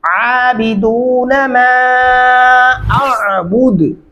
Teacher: अबुदु अबुदु ऐसे नहीं करना। अगर आप ऐसे पढ़ेंगे तो फिर आप सिर्फ हमजा पढ़ डालेंगे, आइन का वजूद ही आप दरमियान से खत्म कर देंगे